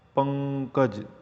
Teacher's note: પ ઉપર ભાર મૂકવામાં આવે છે